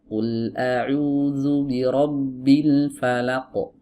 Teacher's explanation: Nah, falaq laq diayun enggak boleh laq. Langsung masuk dari lam ke huruf qof